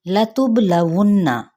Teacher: لام کی حرکت کو لمبا نہیں کریں گے اور با پر قلقلہ کریں گے، نون پہ غنہ کریں گے